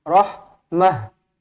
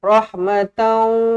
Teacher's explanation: ini adalah ta marbutah, dia akan tukar menjadi huruf ha mati